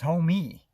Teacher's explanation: he definitely pronounced it with a lot of emphasis on the second syllable. So it was homie.